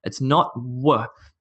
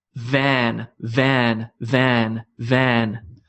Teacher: there's no rounding of the mouth this is purely bottom lip on top teeth